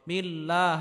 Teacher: বা আলাম জের বিল, লাম খারা জবর লা, বিল্লাহ। আল্লাহ শব্দের পূর্বে যদি জের হয় তাহলে আল্লাহ শব্দকে চিকুন করে পড়তে হবে।